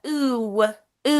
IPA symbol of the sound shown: iu